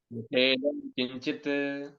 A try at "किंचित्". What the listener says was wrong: किंचित नहीं किंचित त अर्धो त है